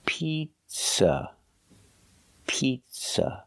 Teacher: the second syllable is not stressed it's pronounced with a relaxed uh Pizza piz use a relax uh like cup and up it's